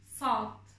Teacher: Yine Türkçe'de olmayan sat. Sat harfi kalın ve tok bir şekilde söyleniyor. Boğazdan çıkararak söylüyoruz yine bunu. Yine biraz kendinizi zorlamanız gerekecek.